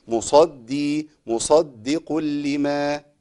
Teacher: يبقى انا اللي يسمع معايا، اللي بيسمع قراءتي بيسمع خروج من الدال، لكن انا لازم ابدا بالدال الساكنه اللي هي اول مشدد بالترقيق